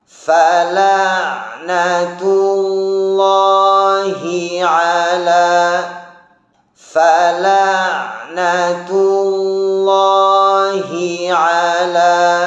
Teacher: Huruf H dari lafaz Allah hati-hati juga, jangan sampai dibaca samar.